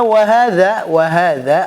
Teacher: ujung lidah menempel ujungnya gigi seri atas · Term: huruf dza